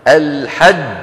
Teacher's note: فإذا الجيم من الحروف الشديدة التي ينحبس الصوت عند النطق بها.